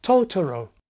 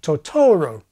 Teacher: The first time, it's the initial syllable that's put on beat number one, TO-to-ro. The second time, it’s the middle syllable that’s associated with beat number one